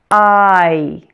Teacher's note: This is a blend of the ah and e sounds. So this one is a true official diphthong, or a blend of two vowel sounds. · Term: long I